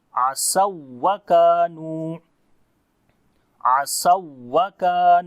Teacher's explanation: we raise our voice on the wow